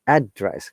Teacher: So it is higher intonation to lower intonation.